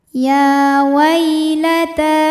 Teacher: Qala ya wai ada harfu lin atau huruf lin. Sebab ada ya sukun didahului baris fathah, maka dibacanya lembut